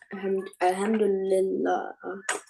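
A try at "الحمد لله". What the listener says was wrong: Break it up like I did. Alhamdulillah, Allah. Now, if you're crunching it all together, then you say Alhamdulillah. Alhamdulillah.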